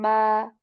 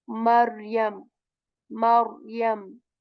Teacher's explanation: So for this meme letter, we simply are using our two lips and saying ma